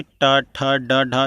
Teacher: तो आपकी जो जीभ होती है ना, जीभ आपके मूर्धन्य को टच करेगी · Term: मूर्धन व्यंजन